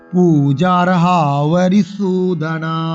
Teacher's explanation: ওয়া বরি নয়, ওয়া অন্তস্থ ব